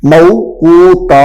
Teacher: اب یہ تا کے اوپر تنوین ہے، تا کے اوپر دو زبریں ہیں، یہ والی دو زبریں ہیں تا کے اوپر۔ اب ہم نے رکنا تھا تو موقوتا ایک زبر رہ جائے گی